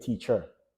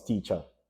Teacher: in Jamaican Creole, that ER is going to change to A